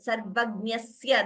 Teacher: Sarvagnyasya, that S is doubling. Dayakarasya, again there S is doubling. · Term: Dvitvam